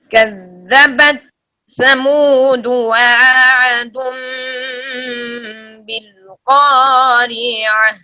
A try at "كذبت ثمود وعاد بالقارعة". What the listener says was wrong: واو کے بعد عین صاف نہیں ہوئی، پھر پڑھیے۔